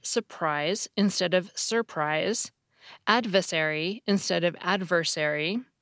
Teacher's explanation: people still tend to drop an R if it is in the middle of a word and comes before another syllable that has an R. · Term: dissimilation